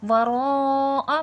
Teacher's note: بڑی مد ہے، 5 سے 6 الف کے برابر کھینچ کے پڑھا جائے گا